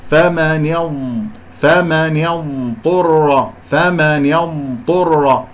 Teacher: الضاد إخوتي الساكنة فيها صوت، يعني لما أقول الضاد من صفاتها رخاوة ساكنة، إذا أنا لازم أسمع فمن يوم فمن يمطر فمن يمطر، هكذا أسمع الرخاوة اللي هي جريان الصوت والاستطالة